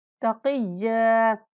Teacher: काफ को पुर पढ़ेंगे और यहाँ पर सख्ती करते हुए 1 सेकंड तक लंबा करके पढ़ेंगे